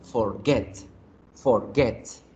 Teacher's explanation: que otros ejemplos tenemos begin beginning ricketts forgetting submit sus meeting estas palabras cuya fuerza se hace al final de la palabra